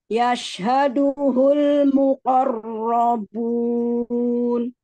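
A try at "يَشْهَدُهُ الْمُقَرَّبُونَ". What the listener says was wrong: Huruf shinnya, keluarkan lagi tafasih. Yash.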